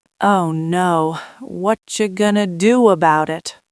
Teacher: You slowed down the vowels, whatcha gonna, but you didn't break the consonant links. You didn't revert to what are you going to do. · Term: connected speech